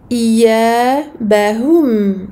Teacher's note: Donc on fait les deux temps ici. Ici on avance les lèvres pour la dhamma et on revient avec ses lèvres à la normale pour le sukun. Ici pour le mim sukun bayniya, écoulement partiel du son.